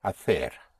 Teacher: C before E and I, like in hacer, in Madrid and Castilian Spanish is pronounced like a TH, like an English TH